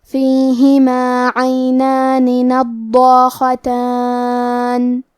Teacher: حرف الخاء کی ادائیگی حلق کے اوپر والے حصے سے ہے. خاء حروف التفخیم میں سے ہے تو ہم حرف الخاء کو بھاری آواز میں پڑھیں گے.